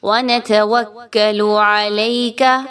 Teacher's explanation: نون تا وا سب پہ ایک ایک زبر کی حرکت ہے، تو آپ نے اس کو سیم مقدار میں رکھنا ہے، کسی ایک کو ایکسٹرا لمبا اور کسی کو بالکل کم نہیں پڑھنا